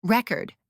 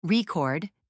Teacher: Noun, stress on first syllable. Verb, stress on second syllable.